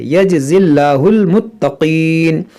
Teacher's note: इस या को, इस अलिफ को, इस लाम को नहीं पढ़ेंगे, इस जा को इस लाम से मिलाएंगे, यजज़िल्लाहु। और यहाँ पर इस लाम को बारीक पढ़ेंगे क्योंकि ज़ेर है